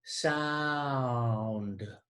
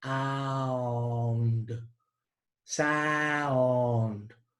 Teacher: we begin with ow, and then we move to another vowel sound, ound, sound. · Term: diphthong